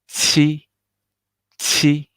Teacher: I need to hear very strong air pop out and smile face.